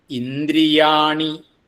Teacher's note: ഇന്ദ്ര എന്നാണ് നദ എന്നാണ് അത് കുറച്ചു മാറി പോകരുത് അത് മൃദുവായിട്ടുള്ള ദകാരമാണ് ന എന്നുള്ളതിന്റെ കൂടെ കൂടുന്നത് മൃദുവായിട്ടുള്ള ദകാരമാണ് അതിൻറെ കൂടെ ര